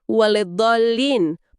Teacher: mad atau panjang di huruf dod, itu kan mad lazim, wajib 6 harokat, nggak boleh kurang. Terus tasjid di dotnya juga harus jelas, ada penekanan.